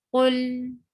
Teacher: we will not stop lam abruptly, but we will continue saying it for a little while. It's not too much, it's not short like stop, but it's a medium flow of sound.